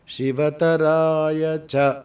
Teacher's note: ఆ చ అనే అక్షరం అనుదాత్తం స్వరం ఇస్తున్నాం